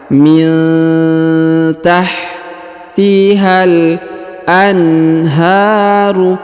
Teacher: huruf nun sukun bertemu dengan ta, maka didengungkan dan disamarkan